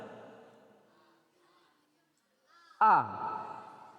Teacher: A makhrajnya di pangkal tenggorokan.